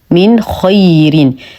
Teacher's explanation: نون ساكنه وبعدها حرف الخاء الحكم اظهار حقيقي مع غنه ناقصه نظهر النون ونظهر الخا مع التفخيم من خي ننتبه من عدم ضم الشفتين وحصر الصوت داخل الفم